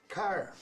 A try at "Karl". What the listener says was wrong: Carl. Karl. Not Carla, just Karl. Karl. Karl. Karl. No. No. No. Karl. You don't need to add...